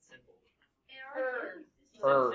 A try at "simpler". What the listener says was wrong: Simpler. Yeah, because we say simpler, right? We like kind of combine it.